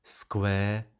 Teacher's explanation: diphthongs ending in schwa have become long vowels in the south